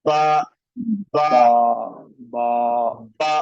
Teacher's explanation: हमारा जो होंठ वाला जो हिस्सा है अंदर का, वो एक दूसरे के साथ टच हो रहा है